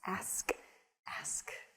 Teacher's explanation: it's reversing the the consonants in the word ask